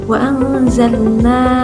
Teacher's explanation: mad jaiz muttasil, yang mana yang bacaan harokatnya itu 5 sampai 6